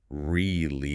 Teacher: native speakers crush this word down into 2 very fast, tight syllables.